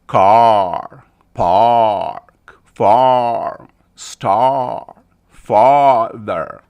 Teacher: You open your mouth wide and you just say ah. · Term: ah sound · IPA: /ɑː/